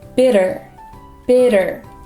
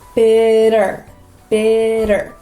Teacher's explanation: when you say the sound, your tongue is going to flap and then pull back. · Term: flap T